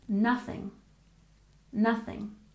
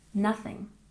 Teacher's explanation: we've got that th sound in here remember to stick your tongue between your teeth